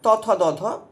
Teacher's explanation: দন্তবর্ণ দাঁতের সঙ্গে টাচ হচ্ছে জীব